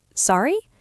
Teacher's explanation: You say it with a rising intonation to show you didn't hear or understand.